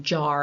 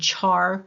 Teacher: jar is J is voiced CH Char is the CH in Char is um voiceless